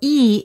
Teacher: e is a front vowel because the front part of the tongue goes up in front of the mouth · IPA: /i/